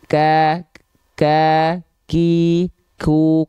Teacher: Padahal kalau kita seksama mendengarkan, sebelum vokal a i u-nya keluar, itu ada percikan nafasnya dulu.